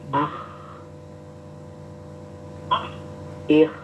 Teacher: kayak ngorok kayak mendengkur tapi ngoroknya itu tidak sampai yang besar tapi juga tidak halus sedengan ya ngoroknya itu sedengan Ya.